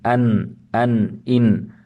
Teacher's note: So there is some restriction when pronouncing the noon, but at the same time, it is not as hard as shidda, but it doesn't flow also as the letter of rakhawa. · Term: tawassut